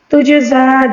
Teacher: جیم کے اوپر ساکن جب آ جائے تو اس کو ہلا کر یعنی کلکلے کے ساتھ پڑھنا ہوگا